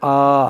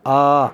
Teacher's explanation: حمزہ پر کھڑا زبر ہے، ایک حرکت کے برابر کھینچ کر